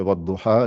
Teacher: quand je fais wadduha, la ha est allongé de 2 temps. C'est l'allongement basique qui est là euh, et qui vient du mot arabe même, de l'origine arabe du mot. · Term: madda tabi'i